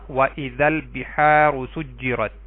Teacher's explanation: ال کا لام پڑھا گیا کیونکہ با حروف قمری میں سے ہے